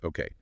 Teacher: the okay has a rise in intonation